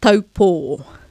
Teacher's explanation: we're going from the most open, sharp sound to the softest, most closed sound in a split second